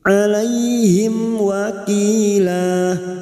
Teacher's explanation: mim sukun bertemu ww Idhar syafawi mim sukun dibaca jelas tanpa mendengung